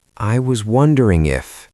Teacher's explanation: I could hear the hesitation. The pitch went up at the end.